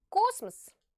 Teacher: what about the other o the one that is not stressed is pronounced like a very short a